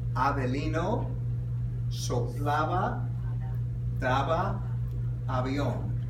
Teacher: Okay, for the soft, it is the lips just gently touch one another. It's not as explosive.